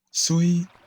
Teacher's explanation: For example, the character for water, Sui, has a high initial pitch and a high final pitch, making it a high flat tone.